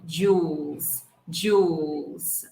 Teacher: the dark l the l that we're going to hold behind our teeth